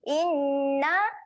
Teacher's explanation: na kita akan panjangkan sebanyak 4 harokat. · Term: bacaan dengung